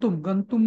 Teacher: म चा अनुस्वाराचा उच्चार त जर समोर असेल तर न होतो